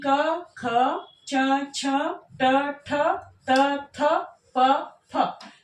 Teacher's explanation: अघोष वर्ण वे वर्ण होते हैं जिसमें जब हम बोलेंगे तो हमारे स्वर तंत्रियों में कंपन नहीं होगा, नाद उत्पन्न नहीं होगा